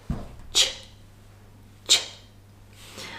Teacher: it's composed of 2 consonants merged together. T and sh. The t is the plosive part. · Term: ch sound